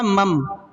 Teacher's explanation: نون ساکن کے بعد با آ گیا تو ہم نے نون کو کس چیز سے بدل دیا؟ میم سے بدل دیا